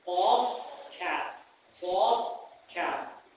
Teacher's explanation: Angalia qaf utasikia ni kitu kiko kwa juu, alafu kaf ni kwa chini yake.